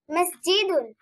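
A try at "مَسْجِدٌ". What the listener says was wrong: জি টান হবে না তো। মসজিদুন।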